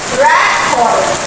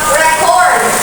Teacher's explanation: The noun is stressed on the first syllable, the verb on the second.